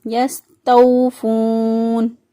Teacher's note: واو ساکن سے پہلے والے حرف پر پیش ہے، اس کو میکسیمم 6 الف تک لمبا کر سکتے ہیں کیونکہ یہ وقف سے پہلے موجود ہے اور نون وقف کی صورت میں ساکن ہو جائے گا۔ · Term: واو مدہ